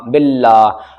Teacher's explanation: اللہ کے لام سے پہلے با کے نیچے زیر ہے تو اللہ کا لام باریک پڑھا جائے گا